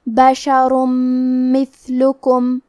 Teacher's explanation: میم حروف الادغام بغنہ میں سے ہے تو ہم یہ حکم کو غنہ اور تشدید کے ساتھ ادا کریں گے